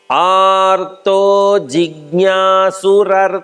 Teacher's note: ಇಲ್ಲಿ ಆರ್ತೋ ಅಲ್ ಮಹಾಪ್ರಾಣ ಇಲ್ಲ. ಜಿಜ್ಞಾಸುರರ್ಥಾರ್ಥಿ ಪಕ್ಕದಲ್ಲಿ 2 ಮಹಾಪ್ರಾಣ.